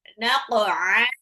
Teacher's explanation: qafnya pantul ke qa dulu